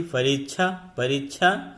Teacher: संयुक्त व्यंजन है, जो क एवं मूर्धन्य श से मिलकर के बना हुआ है